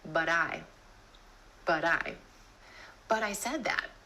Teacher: Instead of that true T at the end of the word but, try the flap T.